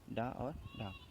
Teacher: जो होते हैं उनको बोलने में हमारी जीभ पहले तो ऊपर उठती है और फिर मूर्धा को स्पर्श करती है और करने के बाद फिर झटके के साथ नीचे गिर जाती है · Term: उच्छिप्त व्यंजन